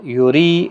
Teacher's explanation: ری یا مدہ ہے، باریک بھی پڑھا جائے گا، را، دال ساکن پر قلقلہ ہوگا وقف کی صورت میں، 3 سے 5 الف کے برابر کھینچ کر وقف کریں گے۔